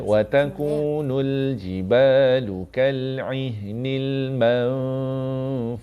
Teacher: Man ni lambatkan sikit. Dengung dia kena 2 rakaat.